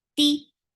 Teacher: Ta has no flow of sound, and for kasra give E sound.